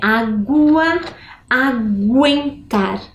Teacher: Dá a impressão que eu escuto o G com o U. Se eu escuto o U no meio desta sílaba, é sinal que nós não temos um dígrafo.